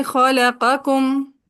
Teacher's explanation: خلقکم میں قوف کا کاف میں ادغام ہو جائے گا